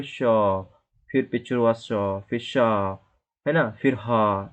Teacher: तो आपके मुख से हवा निकलती है, वो भी गरम गरम हवा निकलती है, तो ये ऊष्मा व्यंजन होता है